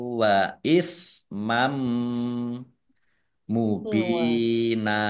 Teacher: Fathah tanwin bertemu dengan huruf mim, bacaan idgham bihunah, masuk dengan mendengung, yaitu mendengung mim ditandai mimnya ada tasdidnya, ditahan 2 harokat biar tampak dengungannya.